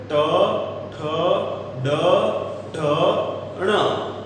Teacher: તમારી જીભનો આગળનો ટોચનો ભાગ છે એ સહેજ વળાંક લે છે અને વળાંક લઈ અને બાદમાં બહાર નીકળતી હવાને અવરોધી અને સ્ફોટ સાથે છોડવામાં આવે છે · આ જ્યારે બોલીએ છીએ ત્યારે આપણી જીભ જે છે એ મૂર્ધ આકારમાં એટલે આગળનો જીભનો અગ્રભાગ સહેજ વળાંક લે છે અને એ લીધેલો વળાંક તાળવા સાથે અફડાવી અને વિસ્ફોટ સાથે હવા છોડે છે અને પરિણામે જે બોલાય છે વ્યંજનને કહેવાય મૂર્ધન્ય વ્યંજન.